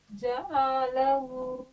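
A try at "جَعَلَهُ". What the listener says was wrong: عین نکالنے کی کوشش کیجئے، جعلہ۔ حلق سے پڑھیے گا، حلق پہ ایفرٹ ڈالیے گا نا، دھیرے دھیرے نکلنا شروع ہو جائے گا۔ جعلہ،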